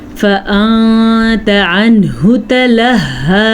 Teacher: نون ساکن کے بعد تا ہے تو اخفا ہوگا